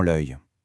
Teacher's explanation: Sa prononciation est un peu particulière, un œil. On entend bien ce petit son J à la fin.